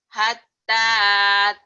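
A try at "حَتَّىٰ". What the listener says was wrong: Kayak ditekan. Hatta ta'tiyahumul. Bukan atta tapi hatta. Hatta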